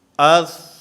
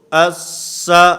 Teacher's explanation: اب اس پر ہم سختی کریں تو اس، یہ ثا یہ سین سے بدل جائے گا